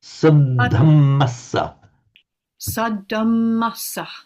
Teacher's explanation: we've got three doublings. We've got a double th, a double m, and a double s. So say that word sadhamasa without being shy about the doubling. · They are all of the vowels here. They're all a short a. But the fact they're all short doesn't mean that you swallow them. They've got, although they're there, they're short, but they are there, and they've got to be given their full value, however short.